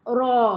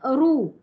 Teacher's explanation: bila baris atas ro macam tu ataupun ru makanya bacaan ro mesti tebal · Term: tafkhim